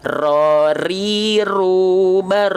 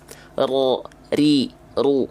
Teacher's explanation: Ro itu getarannya takrir sedikit tapi tetap lugas jelas dan tegas ro ri ru ada getarannya Jangan sampai hilang ro seharusnya huruf